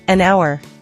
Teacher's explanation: We say an hour because the H is silent.